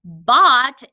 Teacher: between those syllables row bot row was open bot is closed that o is saying ah and it's closed in by a consonant